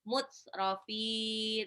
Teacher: Tak sukun itu punya sifat syiddah, hanya suara yang ditahan suara dari hamasnya.